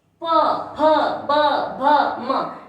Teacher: इन व्यंजनों को बोलने के लिए अपने जो होठ है उनका प्रयोग में आ रहा है, इसलिए इनको ओष्ठ्य व्यंजन भी ओष्ठ्य व्यंजन कहते हैं।